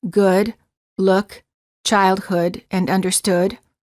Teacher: the lips are very rounded and the tongue is relaxed the back of the tongue is raised and slightly higher than for the o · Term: uh as in good